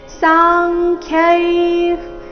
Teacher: ಯ ಮೇಲೆ ಆಘಾತ ಯತ್ಸಾಂಖ್ಯೈಃ ಯ ಆದ ನಂತರ ಅರ್ಧ ತಕಾರ ಮುಂದೆ ಸಾಂಖ್ಯೈಃ ಸಾ ದೀರ್ಘ ಅದರ ನಂತರ ಕ ವರ್ಗದ ಅನುನಾಸಿಕ ಅಂಗ ಖ್ಯೈಃ ಅರ್ಧ ಖ ಪೂರ್ತಿ ಯೈ ವಿಸರ್ಗದ ಉಚ್ಚಾರಣೆ ಅರ್ಧ ಫ ರೀತಿ